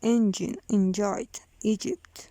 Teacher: Voiced lenis palato-alveolar affricate.